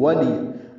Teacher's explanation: واو میں ہونٹ نا تمام گول ہوتے ہیں، آگے لاتے ہیں